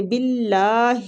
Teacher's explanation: اللہ کی لام کو ادھر باریک پڑھیں گے کسرہ کی وجہ سے